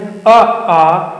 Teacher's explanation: सीधी कंठ से आवाज आ रही है, उठानी वाली सीधी कंठ से आती है आवाज।